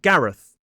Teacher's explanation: the voiceless TH sound /θ/, like at the end of the name Gareth